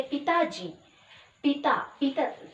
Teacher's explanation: यहाँ पे बलाघात कौन है, किस पे है, ता में है, ता पर बलाघात है